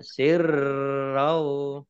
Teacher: Sirrau, roknya dibaca double, ada tasdidnya ya.